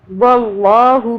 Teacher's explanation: اللہ کو موٹا پڑھنا ہے، اللہ سے پہلے واو پہ زبر آ رہا ہے، اللہ کو موٹا پڑھیں گے۔